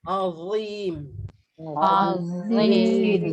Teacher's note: Kalau za, lidah keluar dan tebal sifat.